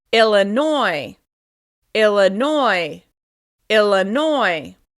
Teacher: This state is stressed on the last syllable, and it's pronounced a little different than it looks.